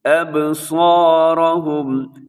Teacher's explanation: یہاں با اپنے ہلانا ہے، با کی آواز قلقلہ کریں گے